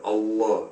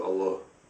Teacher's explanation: The difference is mainly the elongation of the L, Allah, as opposed to Allah.